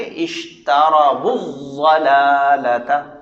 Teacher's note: واو کو ضاد کے ساتھ ملا دیں گے